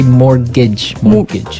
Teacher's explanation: it has a tee in it but you don't pronounce it